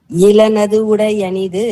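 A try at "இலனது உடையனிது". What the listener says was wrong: இளனதுடையனிது அந்த அது ரெண்டையும் சேர்த்து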